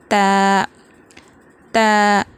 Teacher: زبان کی نوک جو ہے وہ سامنے کے جو دونوں اوپر والے دونوں دانت ہوتے ہیں اس کی جڑ کو لگائیں گے تو ادا ہوگا تا، تا، اور تا کو پتلا پڑھیں گے تا، تا۔